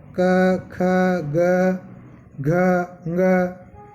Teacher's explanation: यदि इन वर्णों को बोलेंगे तो अपने को ऐसा लगेगा जैसे कंठ में कंपन हो रहा है या हवा कंठ में टकरा रही है।